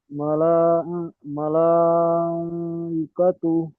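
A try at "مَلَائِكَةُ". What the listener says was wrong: মালা, ই টান হয়ে যাচ্ছে, হামজা টান হবে না, হামজার নিচে জের আছে, যাবার জের পেশ টান হয় না, খেয়াল করে পড়তে হবে।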